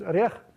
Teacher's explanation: the word for nut, which is arech, has lexical accent on its second syllable, and that means that no matter what you add to that noun, the stress is not going to shift.